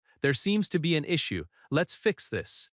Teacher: Falling tone at the end shows control.